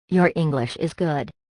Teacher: you stress the verb by raising the pitch of your voice on is